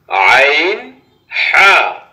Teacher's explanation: 2 number মাখরাজ, হলকের মধ্যখান হইতে আইন হা